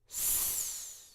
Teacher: The S sound is made by pushing the air out through our teeth.